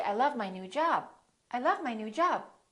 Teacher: you can hold the B you can hold the stop